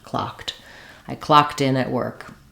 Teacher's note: the letters Ed D are just going to say the T sound